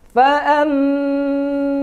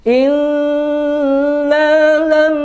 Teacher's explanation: atau mim bertasdid cara membacanya didengungkan ditekan ditahan yang la lama didengungkan yaitu keluar dari suara alkhaisyum yaitu pangkal pangkal hidung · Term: ghunah musyaddadah